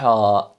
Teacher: اسی طرح ہا پڑھا جاتا ہے ہا، ٹھیک ہے نا، تو آپ کو پتہ ہے کہ یہ حلق کے درمیان والے حصے سے ادا ہوتا ہے